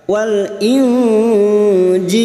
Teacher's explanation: Kita samarkan bunyi nun sukun dan mendengung selama 3 harakat. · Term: ikfa hakiki